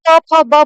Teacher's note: देखो प फ ब उच्चारण करो तो आपको लगेगा कि आपके जो लिप्स हैं, होठ हैं, वो दोनों होठ से आप प फ ब बोल रहे हो, सिर्फ आपके दोनों होठ ही यूज हो रहे हैं। जब आप च छ ज बोलेंगे तो आपका जो टंग है ऊपर वाले जो तालु होता है उसको टच करता है, तो इसीलिए इसको तालव्य बोला जाता है, च छ ज।